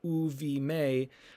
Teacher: So we end up with u vimei. Because the conjunctive vav is pronounced u as a vowel before the beged kefet letter